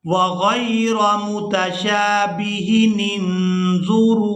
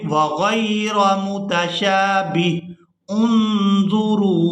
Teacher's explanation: यानी अगर हम वक़फ़ के साथ पढ़ेंगे तो फिर ये हमज़ातुल वसल पढ़ा जाएगा। लेकिन अगर हम यहाँ पर वसल के साथ पढ़ते हैं यानी वक़फ़ किए बगैर पढ़ेंगे तो फिर ये हमज़ातुल वसल गिर जाएगा। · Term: वसल की सूरत